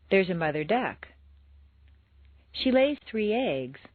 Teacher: Stress the second word of each phrase.